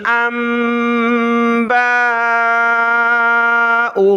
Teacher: حمزہ کو ہم نے میم کے ساتھ ملانا ہے، ناک میں آواز پیدا کرنی ہے، اس کے بعد با کے اوپر کھڑا زبر ہے اور مد ہے، تو اس کو زیادہ کھینچنا ہے اوپر کی طرف · یہاں الف کے اوپر زبر ہے تو اس کو حمزہ پڑھیں گے۔ حمزہ کو ہم نے میم کے ساتھ ملانا ہے، ناک میں آواز پیدا کرنی ہے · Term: چھوٹی میم